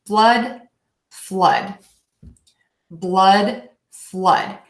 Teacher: mouth up so it's essentially I'm just hoping about uh and my tongue is just sort of generally in the middle of my mouth and a nice short relaxed vowel